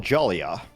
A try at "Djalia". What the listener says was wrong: The D is silent, more or less.